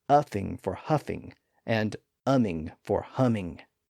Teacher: he dropped the H in words that were normally pronounced with an H sound